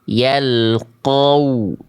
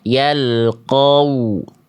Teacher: yang monyongnya hanya wawu, qafnya jangan monyong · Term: wawu monyong